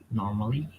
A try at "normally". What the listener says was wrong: Yeah, they will say normally, but we don't say normally. Have you heard the British pronunciation? Listen to it carefully. No, there is no R sound. Can you see in the IPA? In the transcription, there is no R.